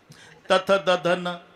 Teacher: जेव्हा संबंध जिभेचा दाताशी ते दंते आहे